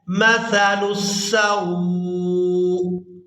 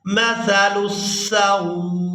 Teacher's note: اب یہاں پر ہم وقف کریں گے تو وقف کی صورت میں حمزہ کو ساکن کر دیں گے، لام کو سین مشدد کے ساتھ ملائیں گے، پھر سین کو ہم نے واو ساکن اور حمزہ ساکن کے ساتھ ملاتے ہوئے اس طرح سے ادا کرنا ہے مثل السوء۔ آخر میں جب حمزہ ادا ہوگا تو آواز میں جھٹکا سا محسوس ہوگا